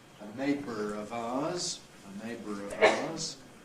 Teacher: A neighbour of ours, well, linking R, a neighbour of ours. Schwa plus R, syllabic consonant formation into syllabic R.